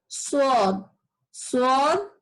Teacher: আমাদের জিভটা উপরের দাঁত টাচ করে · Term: ইস্তিয়ালা